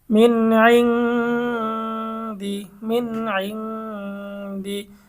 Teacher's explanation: অস্পষ্ট গুন্না বলার কারণ হচ্ছে গুন্নাটা নাকের থেকে বের হয়